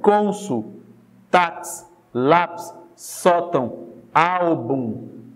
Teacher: A penúltima sílaba é mais forte, ela é mais evidente, ela é pronunciada com mais intensidade. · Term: sílaba tônica